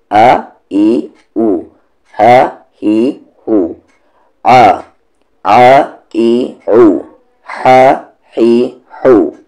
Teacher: हमज़ा का मखरज bottom throat होता है और इस हा का मखरज भी बॉटम थ्रोट ही होता है